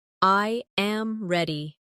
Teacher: The voice falls naturally at the end.